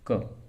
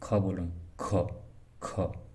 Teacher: अल्प प्राण क्या है इसमें ह का जैसी ध्वनि नहीं निकलती वही महाप्राण में ह का जैसी ध्वनि निकलती है